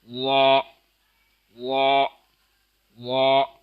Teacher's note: وا کی آواز موٹی نرم اور منہ کے سامنے سے ادا ہوتا ہے